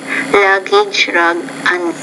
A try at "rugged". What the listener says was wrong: No, luggage, rugged. Yeah, I think the R and the L sound, you're about 60% intelligible on that, but I still think you can practice it.